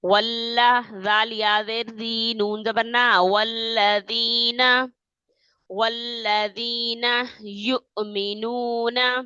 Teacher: لام کو جمانا ہے تشدید کی وجہ سے